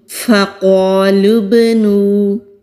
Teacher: فا ہونٹوں سے ادا ہوتا ہے، قاف مستعلیہ حروف میں سے ہے تو موٹا پڑھیں گے۔